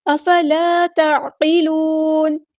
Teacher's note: نون کو ہم ساکن کر دیں گے وقف کرتے ہوئے اور مد عارض بھی ہوگی